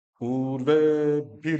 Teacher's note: ऊ को भी बड़ा करो, ए को भी बड़ा करो, भी छोटा रहेगा क्योंकि इसमें ह्रस्व ई है